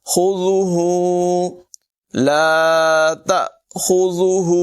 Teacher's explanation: لا تأخذہ، خا کو پر پڑھیں گے، ذال جو ہے اس کے بعد میں سیٹی نہیں نکالیں گے